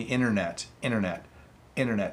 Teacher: so I'm slightly hitting the T